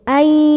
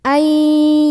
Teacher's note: Jadi masuk ke Ya, lebur ke Ya sambil ada dengungnya dulu.